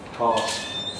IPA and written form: pɑːs (pass)